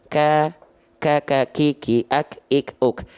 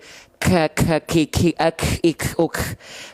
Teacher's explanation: Maka ketika kaf dilafalkan, pastikan nafas yang keluar percikan aja. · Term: percikan nafas